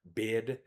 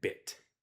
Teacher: I literally pronounce the e noise for a longer time in the word bid than I do in bit.